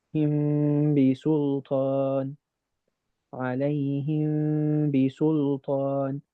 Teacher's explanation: You're putting your lips together too much with the meme. Remember, your lips are ever so slightly brushing each other. They're not holding against each other. So instead, it would be more of a sound of him bi sultan, alayhim bi sultan.